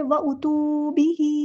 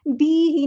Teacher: با کو لمبا نہیں کرنا، ہا کو لمبا کرنا ہے، مد اصلی وہاں پر ہو رہی ہے